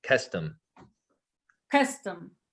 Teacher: it's an aspirated k